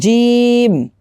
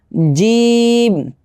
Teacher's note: 4 আলিফ পরিমাণ টান দিতে হবে